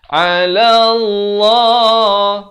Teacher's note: lafz jalalah di sini dibaca tebal 2 harakat